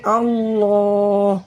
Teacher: حالت وقف میں ہا کا پیش ختم ہو جائے گا، ہا پہ جزم لگ جائے گا، پڑھیں گے اللہ۔